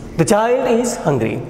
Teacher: Here the statement will take falling tone, being ordinary statement.